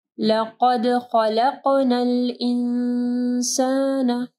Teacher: قاف کو ہیوی پڑھنا ہے، ٹھیک ہے، دال کے اوپر جو ہے کلکلہ کرنا ہے